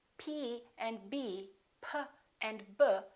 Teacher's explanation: P and B, have the same point of articulation because both of them require the lips to close